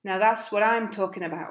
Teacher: he makes the T disappear from that's he joins what and I'm together what I'm and talking gets reduced to talking now that's what